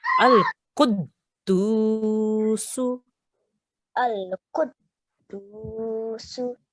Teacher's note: make sure here we have a thick qaf and we are joining it to this dal because the dal has a shadda